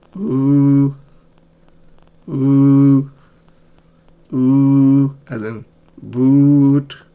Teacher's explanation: Notice how my lips are rounded and tongue is in the high back.